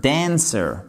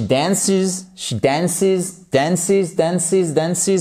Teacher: Vous voyez comme je fais l'accentuation sur la première syllabe.